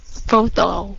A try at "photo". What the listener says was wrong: Không có tồ. Đồ. Phô đồ. Cái âm đi này là cái âm đờ đó. Nói âm đờ giùm xí. Phô đồ. Cái âm đi này tiếng Việt mình có mà.